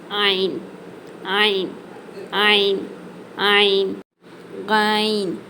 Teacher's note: முதல்ல ஐன் இந்த எழுத்து நடுத்தொண்டையிலிருந்து வெளியாகணும்